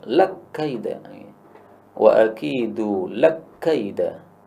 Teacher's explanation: Di sini kaf yang pertama idgham pada kaf yang kedua, lak kaida.